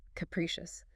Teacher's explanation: Three syllables. Stress on the second.